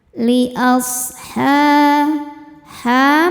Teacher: mad thobi'i muqaddar sebab ada huruf ha dengan harakat fathah berdiri cara bacanya panjang dua harakat